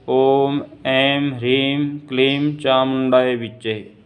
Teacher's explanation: जो अनुस्वार होता है वह माँ ही उच्चारण होता है उसका। जैसे ओम ऐं ह्रीं क्लीं चामुंडाय विच्चे, यह उच्चारण सही है।